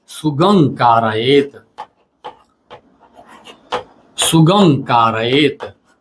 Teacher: मतलब सुगम जोड़ का रयत इसमें म के बाद क्योंकि क आ रहा है इसलिए म का परिवर्तन अंग में हो जाएगा